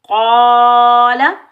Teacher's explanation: قاف حروف مستعلیہ موٹا پڑھیں گے، الف مدہ کو ایک الف کی مقدار میں کھینچ کر ادا کریں گے